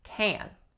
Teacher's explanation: Can is a nasalized tense vowel.